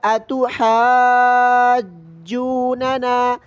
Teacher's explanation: اب اس کے پڑھنے کا صحیح طریقہ آپ نے سن لیا، اتحاجوننا، کہ ہا پر مد ہے، کھینچنا ہے، اور پھر جیم پر تشدید کی وجہ سے تھوڑی سختی کے ساتھ پڑھنا ہے۔ یہ ہے اس کے صحیح پڑھنے کا طریقہ، اور اس کو ہجا کر لیتے ہیں۔